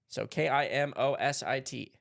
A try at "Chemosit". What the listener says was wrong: C-H-E-M. Like chemistry. Everything it's like you just pronounce it really fast, like chemicet.